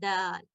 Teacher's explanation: छोटा सा जुबान का ये हिस्सा नोक का अगर हम ऊपर दांतों की तरफ लगाएं तो अदा होता है दाल